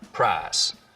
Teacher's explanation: Now, smoothing is when you take a diphthong, like ow, and smooth it out so it's just one sound, ah. Just like we have price smoothing in much of the South, so that I smooths out to just price.